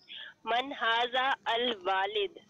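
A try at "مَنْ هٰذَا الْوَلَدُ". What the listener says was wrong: वालिद नहीं है, प्रोनाउंसिएशन की भी गलती है, मतलब की भी गलती है। मन हाजल वलद,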